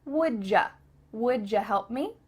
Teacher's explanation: would you help me becomes wouldja